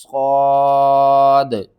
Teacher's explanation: صاد کو آپ نے موٹا کر کے پڑھنا ہے